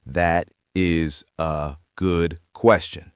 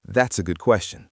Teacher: The first three words blend into one sound. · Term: connected speech